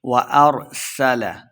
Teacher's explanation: سین پہ سیٹی کی آواز آئے گی